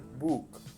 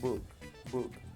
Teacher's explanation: Pero en el caso del inglés, cuando la doble O está con una K, el sonido es neutro, es decir, se pronuncia una U sin hacer mucho movimiento de los labios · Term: U neutra